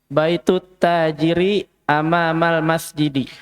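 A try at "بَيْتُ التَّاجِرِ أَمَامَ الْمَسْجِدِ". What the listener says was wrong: Masya Allah, mumtaz.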